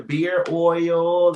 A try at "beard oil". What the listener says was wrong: Beer oil? Oh, beard. you said beer oil. No, that D wasn't on the end of that. Now, you know how to get to the D, but you didn't get to that D.